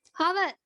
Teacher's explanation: අපි මේ වචනේ h අකුර ප්‍රොනවුන්ස් කරන්නේ නැහැ පුතේ. හව කියලා තමයි කියන්නේ.